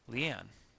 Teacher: the name Leanne includes the emphasis on the second syllable